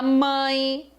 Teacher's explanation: o a é a vogal e o e passa a ser é semivogal · E se você parar para pensar, quando você fala mãe, o an, ele é a tônica. E o mãe, o E, ele passa a ter o som do I.